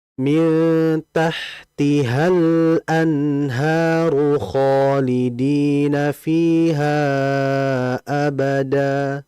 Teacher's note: Kemudian berikutnya hati-hati pada lam sifatnya, yaitu mengalir.